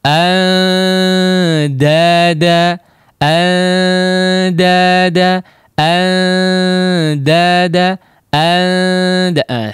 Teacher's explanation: Hampir tidak terdengar nun sukunnya. Ya, jadi sangat samar.